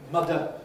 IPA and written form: ˈmʌdə (mother)